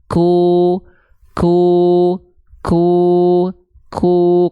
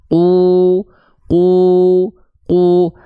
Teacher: Makanya kaf ada percikan nafas sedikit. Contoh, ku. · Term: huruf kaf